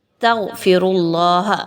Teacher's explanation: غین موٹا حرف ہے، تخفیم کے ساتھ پڑھا جائے گا